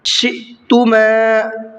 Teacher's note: حمزہ ساکنہ ہے اور حمزہ ساکنہ کے پڑھنے میں جھٹکا ہوتا ہے